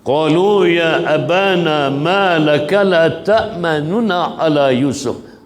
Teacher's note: baris dhammah yang ada pada nun itu dilafazkan kembali bunyinya sekadar bunyi 1/3 daripada baris asalnya baris dhammah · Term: bacaan raum